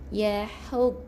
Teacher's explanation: Ha pedas, ada angin yang keluar di bahagian rongga kerongkong tekak kita, bahagian halkum.